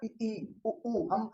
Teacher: ऐसे स्वर जिनको बोलते समय आपका मुंह बंद रहता है, बिल्कुल कम खुलता है, ना के बराबर खुलता है, वो आपके समृत स्वर कहलाते हैं।